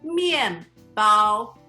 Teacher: bread in Chinese is 面 包 Fourth tone, first tone